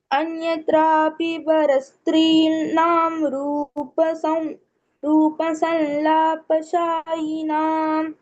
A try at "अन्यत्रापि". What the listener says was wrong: Anya, you give us stress. Anyatrapi nyatra should happen dvitva over there. Instead of saying plain anyatra